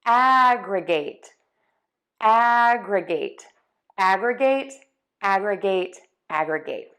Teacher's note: And your tongue moves from having the tip be low to higher in the mouth behind the top front teeth, but it's not touching. Now, we have 2 stress points here, the ag and then the gate